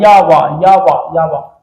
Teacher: या वा या वा या वा, बहुत हल्का, या वा या वा या वा, बहुत हल्का सा, बहुत हल्का सा ही मान लो होठ का स्पर्श हो जाता है। या में थोड़ा सा तालु, वा में थोड़ा सा होठ। · बहुत हल्का सा ही ये मान लो होठ का स्पर्श हो जाता या य में थोड़ा सा तालू व में थोड़ा सा होठ अगर इतना ना होता तो ये भी निकल जाते पार कर ले जाते और ये स्वर की स्थिति में हो जाते लेकिन ये अर्ध स्वर है ये अर्ध नारी स्वर ना नारी स्वर नहीं है।